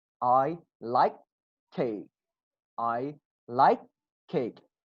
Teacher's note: Focus on my mouth. Only one K comes out. Not like cake.